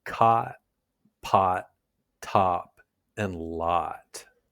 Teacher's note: It's a deeper, rounded vowel sound. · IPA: /ɑ/